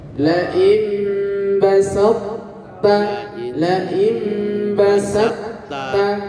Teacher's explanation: jadi qalqalahnya ndak ada karena diidghamkan